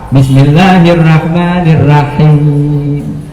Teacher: Rohnya vokal O diganti vokal A.